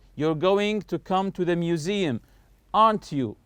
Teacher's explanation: When I say aren't you, notice my voice is going higher here.